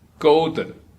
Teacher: the high pitch part is the first tone